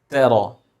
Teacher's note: Ta is light and ra is heavy.